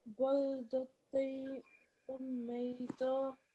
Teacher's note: we produce a slight nasal sound when we're joining it · a bit more emphasis when joining the ta marbuta with the meme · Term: mim mushaddad